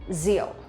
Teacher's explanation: for vietnamese people when we pronounce the r sound we will not pronounce like r in english but we pronounce like z sound